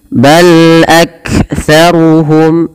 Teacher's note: lam sifat bainiyahnya tidak terlalu di alirkan suaranya dan tidak terlalu ditahan suaranya, tapi dia tengah-tengah.